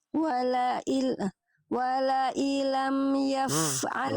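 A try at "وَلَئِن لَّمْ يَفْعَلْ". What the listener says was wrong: Wala illam ditasydidkan. Ya idgham bi gunnah, bila gunnah.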